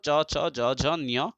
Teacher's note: एते सर्वे वर्णाः भवन्ति एव तालुत एतेषाम् उच्चारणं भवति